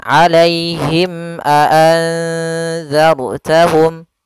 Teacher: maka suara mimnya harus jelas dan tidak boleh ditahan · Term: izhar syafawi